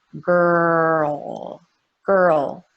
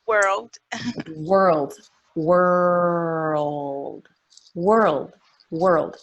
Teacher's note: I feel my tongue up for the R, grrr, and then it moves down for the dark L.